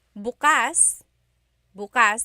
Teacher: If you say bukas, bukas, the emphasis is on the second syllable, that means open.